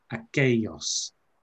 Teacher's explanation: So make sure it's a y, not an L sound when you get a double L. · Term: y sound